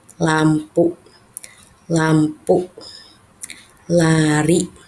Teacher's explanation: huruf L ini pengucapannya itu ujung lidah menyentuh gusi di belakang gigi. L sambil dihampit dengan kedua gigi gigi atas dan gigi bawah.